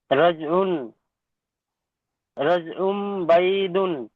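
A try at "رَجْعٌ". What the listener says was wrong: আইন দুপেশ নয়, আইন মিম দুপেশ উম। আইন মিম দুপেশ উম বলে খালি গুণনা করবেন, রজ উম।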